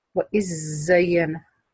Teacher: ما تخرجي لسانك في الذال، على طول تعملي صفير الذال